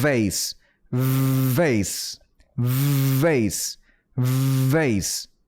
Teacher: V는 그 진동이 느껴져야 돼요. vase, vase, vase, vase 이렇게 그 여러분들이 제 코 같은 거나 이걸 만지시면 분명히 진동이 느껴지실 거고 이렇게 했을 때 근데 안 만져도 소리만 들어도 진동이 느껴지지 않으세요?